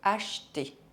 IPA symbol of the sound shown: ʃ